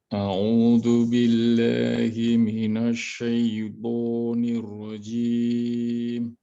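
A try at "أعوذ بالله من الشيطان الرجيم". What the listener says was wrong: Ianya jangan diimalah Pak. Syai tapi syaiqo. Masih imalah dikit. Syai. Pengaruh bahasa. Kalau di Arab syaiqo. Jelaskan dia fatahannya. Syaiqo.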